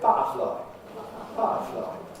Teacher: turning T, alveolar T, alveolar voiceless plosive, into a glottal voiceless plosive. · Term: glottaling